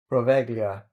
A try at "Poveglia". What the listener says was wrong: No, the G is silent. Poveglia.